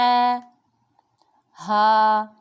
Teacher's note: اور حلق کے نیچے والے حصے سے ہا ادا ہوگا